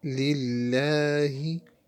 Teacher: In the next word, Allah word, we say the last letter Ha from the bottom part of the throat.